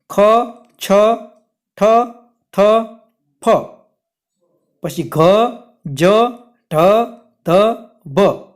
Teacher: आ जे व्यंजनों छे ए व्यंजनों ज्यारे तमे बोलशो त्यारे हवानी एमां वधारे जरूर पड़शे, झड़पथी बोली शकाशे नहीं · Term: महाप्राण व्यंजन